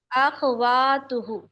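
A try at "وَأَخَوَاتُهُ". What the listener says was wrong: अब आपने खा को साकिन कर दिया, अखवातुहु।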